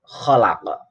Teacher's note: Kalau dibaca wasol ini ada tambahan kholako, ada o-nya. Tapi kalau dibaca wakof berhenti kholaq, maka ini terjadi yang dinamakan qalqalah kubro